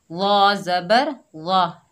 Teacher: ضا نرمی سے ادا کریں گے اور موٹا حروف استعلا میں سے ہے تو موٹا بھی پڑھیں گے